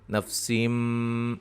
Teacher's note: میم نون تنوین کا جو نون کی آواز پیدا ہوتی ہے اس کو میم سے بدل دیں گے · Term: اقلاب